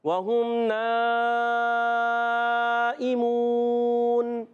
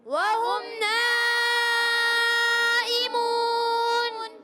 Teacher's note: یہ مد متصل ہے. اس کو 2 ڈھائی الف یعنی 4 یا 5 حرکات کھینچ کر ادا کرنا ہے. اور واو مدہ ہے، اس کے بعد نون کو ساکن کریں گے.